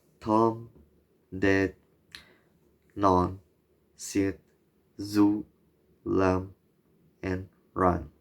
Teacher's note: alveolars, formed by putting the tongue on the alveolar ridge, which is the gum line above the top teeth